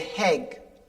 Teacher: I put H's on things. Instead of saying egg, I say heg.